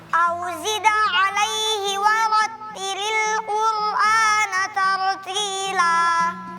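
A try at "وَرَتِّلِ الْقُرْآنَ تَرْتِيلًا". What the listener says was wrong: Jangan la tartila. Lamnya yang terakhir jangan tebal.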